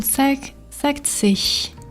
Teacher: ig endings are going to sound exactly like ich